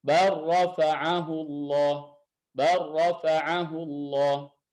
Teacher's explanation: Lam dan ra itu hurufnya berdekatan dan sifatnya berbeda. Nah, ketika ketemu lam dan ra dan huruf yang pertamanya huruf lam misalkan sukun, huruf yang kedua huruf ra itu berharokat, berarti mutaqariban shaghir. Maka dalam riwayat Hafs ya itu dibaca idgham. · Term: idgham mutaqaribain shaghir